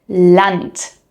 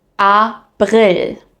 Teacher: It's a clean a sound. And when I say clean, I mean there are no extra sounds mixed in. It's not like the English A and it's not an a either.